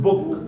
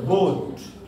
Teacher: ब साउंड जो है वो एक कॉन्सोनेंट है लेकिन वो राउंड लिप्ट हो जाता है।